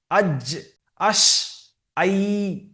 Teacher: জিম, শিন, ইয়া। এই 3টি অক্ষরের মাখরাজ একই জায়গায় থেকে, জিভের মাঝখান উপরের তালু।